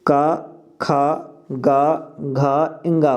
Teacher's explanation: स्पर्श व्यंजन कौन से बोले जाएंगे कंठ से क ख ग घ इंगा बोले जाएंगे